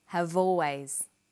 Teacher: we link the final consonant sound V